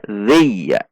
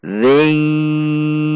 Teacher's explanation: Selanjutnya kasrah tanwin, di depannya ada huruf ya, maka tanwin ini dibaca masuk dan dengung 2 ketuk atau idgham bi gunnah. Ada dengungnya 2 ketuk.